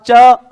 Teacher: च बोलने में जीवा नीचे से ऊपर जाएगी तालु की ओर, क्योंकि इच्छु ऐसा नाम तालु। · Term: स्पर्श संघर्षी